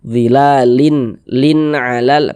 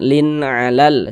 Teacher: Pendek saja karena dia tidak didengungkan. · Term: izhar halqi, izhar